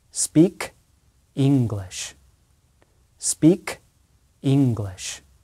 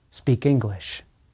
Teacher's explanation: And notice that the noun English starts with a vowel sound, e, e, e. Americans generally link the last sound in speak with the first vowel sound in English. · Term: linking